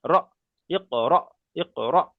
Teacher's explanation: হামজা সাকিনটাকে একটু ধাক্কা কিংবা ঝাটকা দিয়ে পড়তে হয়। এখানে কেমন করে পড়বেন, হামজা কব জের ইক, র হামজা যাবার র, র হামজা যাবার র, একটু ধাক্কা মারতে হবে, ধাক্কা মারতে হবে, র হামজা যাবার র, ইক র, ইক র।